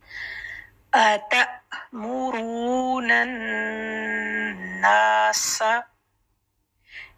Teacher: सीन की सीटी देंगे और सिंगल हरकत रखेंगे